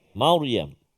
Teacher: Sebab apa tebal? Ra tu bunyi tebal sebab sebelum dia baris atas kan, ya Maryam.